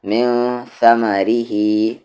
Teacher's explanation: لیأکلو، نون ساکن کے بعد ثا ہے اور ثا حروف اخفا ہے، تو یہاں پر من نہیں من ثمرہ، اور دھیان سے اس میں ثا کو، ما کو اور ری کو تینوں کو نہیں کھینچیں گے